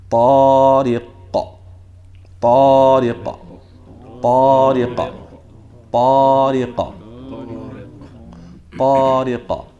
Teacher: So now when you stop on this qaf, you should stop on it and the natural pop should come out, which resembles what? Half of a fatha, half of an A. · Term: Qalqala